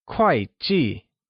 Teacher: 会 and 计 are both pronounced with a falling tone